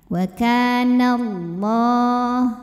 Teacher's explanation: Lam pada lafaz Allah dibunyikan secara tafkhim sebab huruf sebelumnya berbaris fathah, maka kita bunyikan tebal. Pangkal lidah angkat ya.